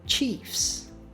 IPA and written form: tʃifs (Chief's)